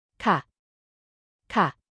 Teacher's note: c is used by women at the end of affirmative statements and has a falling tone